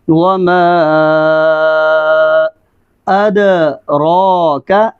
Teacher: دال کے اوپر آواز کو سٹاپ نہیں کرنا، دال کے اوپر آواز جاری رہے گی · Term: حروف کلکلہ